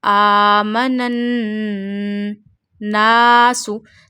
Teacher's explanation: When noon become mushaddad, noon have a tashdeed sign on it, then you take noon sound into the nose and stretch up to one alif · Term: noon mushaddad gunna